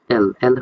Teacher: এই যে এল এল হইতেছে এই লেটারাল সাউন্ড করবা এই আওয়াজটা করার সময় দেখবা যে মাঝখানে বন্ধ থাকে জিবা এবং তালুর মাধ্যমে বাট দুই পাশটা একটু খোলা থাকে